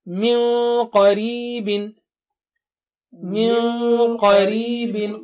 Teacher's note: Qaf is thick and high, Noon Sakina also will be thick and high.